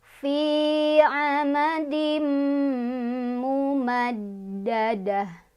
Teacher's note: Fi mad tabi'i karena ada ya sukun, sebelumnya ada kasroh, dibacanya panjang 2 harokat.